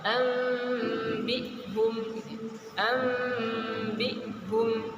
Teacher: jangan dipanjangkan nunnya, enggak, tapi langsung dimasukkan ke huruf, diikhfakan kepada huruf ba.